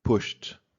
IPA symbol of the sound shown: t